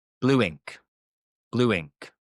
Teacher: When we actually say it, we add a W. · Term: W sound